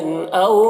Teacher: او یہاں پر واو لین ہے، اسے جلد پڑھیں گے۔